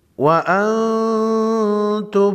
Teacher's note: نون ساکن کے بعد حروف خلقی میں سے کوئی حرف نہیں، یہاں پر اخفائی حقیقی ہوگا